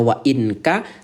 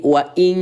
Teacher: Ya, artinya yang tadinya kita baca wa ininka sekarang diubah menjadi wain ka gitu ya. Bunyi n ayah bunda ubah menjadi bunyi ing. Suara ingnya tahan dua ketukan. Wain menjadi waing. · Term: ikhfa